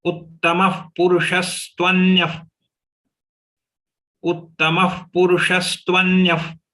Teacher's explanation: You have to twist your tongue from sh to sa immediately.